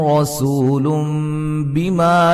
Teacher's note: الف مدہ مد واجب، میم ساکن کا اظہار، را کو موٹا، و مدہ سین کو باریک سیٹی سے، نون تنوین کا اقلاب ہے، نون کو میم سے بدل دیں گے